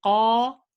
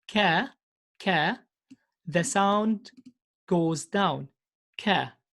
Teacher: We say qa, we notice that the sound goes up. Whereas in other letters like ka, the sound goes down. · we elevated the sound up, and we make the letter thick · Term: musta'li